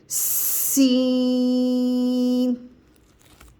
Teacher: और सीटी से पढ़ेंगे पहले सीटी की आवाज आएगी सीन सीन सीन में भी जबान अपनी ही जगह पर रहेगी सिर्फ दोनों दांतों को ऊपर और नीचे के दांतों को मिलाकर सीटी सख्ती से अदा करेंगे